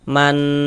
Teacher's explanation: Karena dia gunnah maka cara membacanya digunnahkan. Jadi di bagian mannya itu suaranya itu kita tahan, kita panjangkan sebentar ya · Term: gunnah musyaddadah